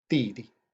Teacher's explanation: so he is the Didi, Didi, D-I, fourth tone, D, repeated, Didi.